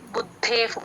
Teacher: ద కింద ద వత్తు మహాప్రాణం రెండు పలకాలి బుద్ధేఫ్ బు కి ద ని జాయిన్ చేసి చెప్పాలి బుద్ధేఫ్ విసర్గ ఎఫ్